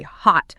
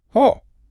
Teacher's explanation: They don't say hot, popping the T aggressively off their teeth. Instead, you just abruptly stop the vowel with your throat. Oh. It feels almost like the word got chopped in half by a tiny guillotine.